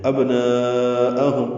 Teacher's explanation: با ساکن پہ قلقلہ ہے، نا پہ مد متصل ہے، الف مدہ کے بعد حمزہ کی وجہ سے.